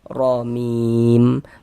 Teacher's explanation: Sehingganya pangkal lisan kita naik terangkat ke atas ketika kita mengucapkannya. Tebalkan huruf ra-nya. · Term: tafkhim